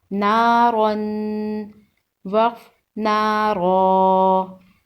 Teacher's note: تنوین کو غنہ کے ساتھ پڑھتے ہیں۔ دو زبر والے حرف پر جب وقف کرتے ہیں تو اسے ایک الف کے برابر کھینچ کر پڑھتے ہیں۔